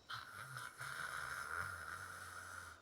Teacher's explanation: limit the amount of air going through the mouth, and the uvula will vibrate slightly against the tongue. The uvula is the little thing hanging at the back of the throat. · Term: French R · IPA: [r]